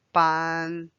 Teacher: Notice it's first tone, so it's flat.